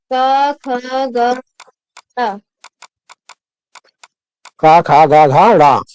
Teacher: इनका उच्चारण कंठ के द्वारा होता है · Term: क वर्ग